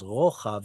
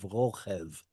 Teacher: because of the chet, it becomes rochav instead of rochev